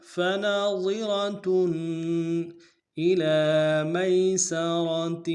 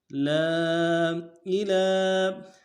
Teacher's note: اِلی میں لام کے اوپر کھڑا زبر ہے، ایک الف میں کھینچیں گے